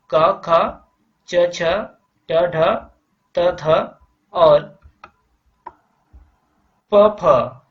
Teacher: अघोष वर्णों के उच्चारण में स्वर तंत्रिकाएं परस्पर नहीं मिलती। फलतः क्या होता है, वायु आसानी से निकल जाती है। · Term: अघोष व्यंजन